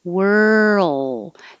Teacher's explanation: to the l you do touch behind the top teeth so this movement from the r to the l is what creates the earl noise